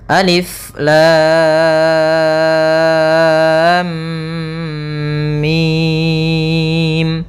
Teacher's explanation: kita panjangkan dulu lamnya baru dimasukkan ke mimnya. Jangan lam langsung masuk mimnya. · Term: mad lazim harfi mutsaqqal